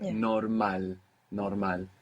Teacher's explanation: And in Spanish, we're stressing the end.